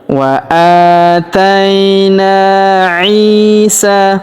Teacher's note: Huruf I kita panjangkan dua harakat karena ya sukun di depannya